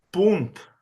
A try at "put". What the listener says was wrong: No, no, tiri via quella N che non ci serve a niente.